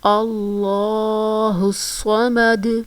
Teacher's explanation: دال جو ہے ساکن ہو جائے گا اور پھر ساکن ہونے کی صورت میں ہم اس پر قلقلہ کریں گے